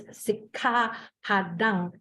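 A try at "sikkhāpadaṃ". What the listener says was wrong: Padang, not NG. NG has a different way. You have to make it a pure nasal. It's a nasal. It's a pure nasal.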